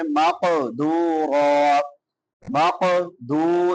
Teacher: میم مشدد ہے، شاد والی میم پہ غنہ ہوتا ہے، اور اس کے بعد قاف ہے حروف قلقلہ میں سے، اس کو ہلا کے پڑھیں گے. مقدورا، مقدو، دال کے بعد واو مدہ ہے، واو ساکن ما قبل ضمہ ہے.